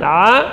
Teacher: huruf ain keluar di tengah tenggorokan, panjang 2 harakat, dan ain termasuk huruf tipis juga